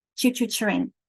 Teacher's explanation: That T and the R, we say so quickly, it feels like a ch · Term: co-articulation